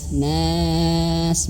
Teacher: Bi rabbin nas. Dan nun ketika berharokat fathah, nah jangan sampai masuk hidung. Nah, keluarnya dari mulut.